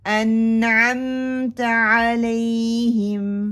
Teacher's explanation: नून को थोड़ा सा पकड़ते हैं और साथ में लेके चलते हैं, आइन को भी पकड़ते हैं और साथ में लेके चलते हैं। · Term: तवस्सुत